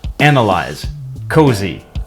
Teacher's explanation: A similar change also occurs in other context. It looks better with e where the s is voiced. In other words, it makes a z sound.